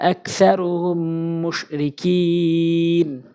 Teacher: হচ্ছে ইদগামে শাফি ইদগামে মিম সাকিনের পর মিম এসেছে নিয়ম আছে মিম সাকিনের পর মিম আসলে গুন্না করে পড়তে হয়